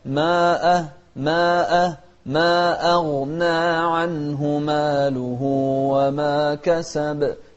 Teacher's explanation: نوضح الترقيق في الهمزة وكذلك نوضح التفخيم في الغين